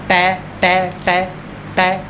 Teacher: तो ये ट ये कपाली में टच करती है